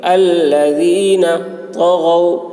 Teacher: تو موٹی ہوگی، غین کی آواز بھی موٹی ہوگی